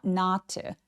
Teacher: and warn them not lie again. 여기서 not 부정어는 매우 중요한 키워드이기 때문에 더 길게 벌려서 not 해 주세요. 안 중요하니까 not to 아니고 not 하면서 힘을 쭉 빼줍니다.